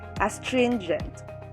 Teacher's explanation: The first syllable is as, second syllable is trin, and third syllable is gent. Here, the stress is in the second syllable